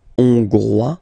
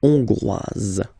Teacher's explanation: Okay, so here final S not pronounced for the masculine form, and then you pronounce it here for the feminine form